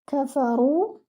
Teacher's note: Your fa should be given 1 count. Your ra should be heavy and it should be given 2 counts because it is with waw maddiya.